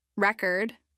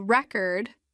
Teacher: record as a noun has the stress on the first syllable